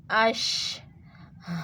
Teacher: شین میں تفشی کی صفت پائی جاتی ہے، اس کی آواز تھوڑی سی پھیل جاتی ہے